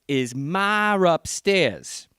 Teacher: you have to resolve the hiatus by putting an R in. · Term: intrusive R